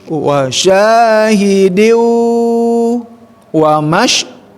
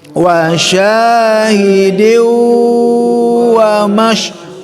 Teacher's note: Jadi situ ada ayat yang ketiga, wasya, hi pendek, diu ingat masuk ke waw, itu masuk ke al khaisum, rongga hidung, atau sebut idgham bigunnah, masuk dengan dengung.